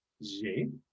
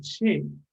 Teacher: Hay personas en Argentina que lo pronuncian como ye, así como haciendo vibrar acá las cuerdas vocales, ye. Otras que lo pronuncian ya como she, en que ni siquiera vibra la cuerda vocal.